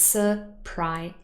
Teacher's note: The only little thing that has changed, if I go back again, is the syllable boundary, because the z sound was part of the second syllable, but here it actually moved into the third syllable. So it's surprising, but pry has the main stress.